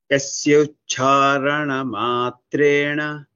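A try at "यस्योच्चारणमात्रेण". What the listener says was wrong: Yasyo charana. It is not yasya. Yasyo o. Yasyo charana matrena.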